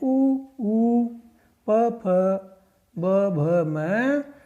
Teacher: इन वर्णों का उच्चारण दोनों होठों से होता है, अतः ये ओष्ठ्य वर्ण कहलाते हैं।